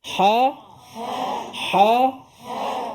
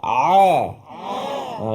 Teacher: ha Ain lain bunyinya tapi makhrajnya tempat sama